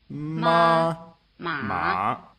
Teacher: the distinctive difference between the two tones you just heard is that one is high and one is low. But you may have noticed that while the high tone was like a single steady high note, the low tone was lower in the middle than at either end.